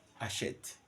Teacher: H is never aspirate in French so we write it we don't pronounce it